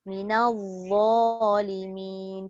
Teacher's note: Apa tujuannya mengangkat dha di atas? Supaya sebutan dha itu jadi tebal.